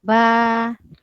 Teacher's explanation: mat asli alif dibaca 2 harkat